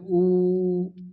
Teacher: पश्च संवृत माने पीछे से निकलेगा। जब हम लोग बोलेंगे उ तो मतलब पीछे अंदर से आवाज आएगी। उ पश संवृत है।